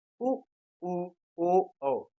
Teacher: जिस स्वर के उच्चारण में हमारे ओठ गोल हो जाते हैं उन्हें वृत मुखी स्वर कहा जाता है